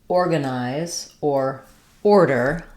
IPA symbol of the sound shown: ɔr